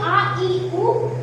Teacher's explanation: ये द्विमात्रिक होते हैं। द्विमात्रिक मतलब इनको उच्चारण करने में दो मात्रा का समय लगता है। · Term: दीर्घ स्वर